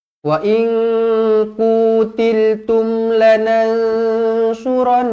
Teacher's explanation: Nun kosong bertemu dengan ka ikhfa Hakiki dengung dua harakat